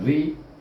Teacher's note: Baca ra dengan nipis pasal di baris di bawah.